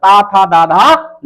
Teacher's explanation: दंत क्या होता है? ता वर्ग जितना है वो दंत है